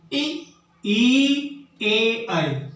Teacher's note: ए, ई, ए, आई, यानी अंदर से जो हवा निकल रही है हमारे फेफड़ों के द्वारा और जो जीभ है वो थोड़ी सी सिकुड़ जाती है और आगे से इसका उच्चारण होता है हवा के माध्यम से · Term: अग्रस्वर